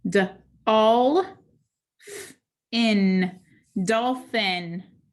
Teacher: the i is followed by an n so it's going to have that schwa sound